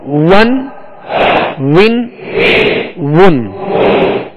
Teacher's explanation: واو کا مخرج کیا ہے؟ دونوں ہونٹوں کی گولائی سے واو ادا ہوتا ہے.